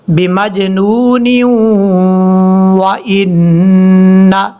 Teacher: نون کے اوپر شد ہونے کی وجہ سے غنہ کریں گے